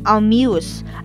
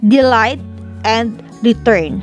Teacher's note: an initial unstressed syllable is followed by a stress syllable